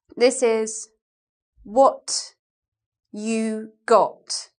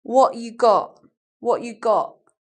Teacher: glottal stop maybe you don't know what a glottal stop is it's when we don't say a T sound in London accents